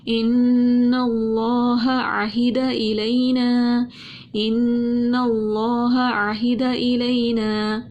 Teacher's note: اللہ کے نام سے پہلے زبر تھی، اللہ کے نام کو ہم نے موٹا پڑھ لیا اور ہاں اور عین کے اندر فرق کر کے ہم نے پڑھا.